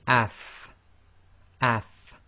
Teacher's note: you should really be able to feel your teeth coming together your upper teeth coming together with the inside of your bottom lips and by pronouncing it with a sukun you should start to